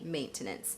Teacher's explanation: in the UK, they may pronounce all 3 syllables.